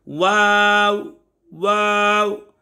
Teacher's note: दोनों होठों की गुलाई से अदा हो रहा है